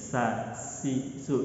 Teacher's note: Kita tidak merasakan getaran ada di dalam mulut kita atau di bawah bagian bawah lidah kita. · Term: huruf sin